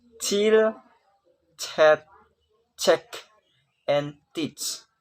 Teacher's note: blocks the flow of air by using the tongue blade to touch the soft palate, and then air pressure forces the tongue blade down so that air is allowed to pass through the narrow space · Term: affricate